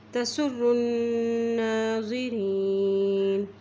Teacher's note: نون کے اوپر شد ہے تو یہاں پہ غنہ بھی کریں گے اور نون کے اوپر کھڑی زبر ہے تو اس کو ایک حرکت لمبا بھی پڑھیں گے